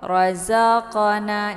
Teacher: pantulan di sini adalah pantulan ringan karena qalqalah ini adalah qalqalah sughra, bukan qalqalah kubra.